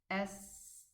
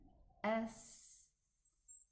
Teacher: the tongue is at the back of the teeth and it is guiding the air to go out in this whistling sound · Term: letter scene